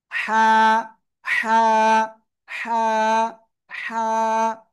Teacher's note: এটা উচ্চারণ করব এই গলার মধ্যখান থেকে উচ্চারণের সময় মুখ দিয়ে হালকা বাতাস বের হবে